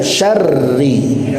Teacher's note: huruf ro-nya tidak dibaca tafkhim alias tidak tebal, melainkan tartib.